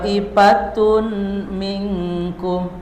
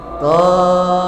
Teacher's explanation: masukkan tanwinnya ke mim. Jadi thfatum baru didengungkan. Sertai dengan dengung. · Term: idgum bigun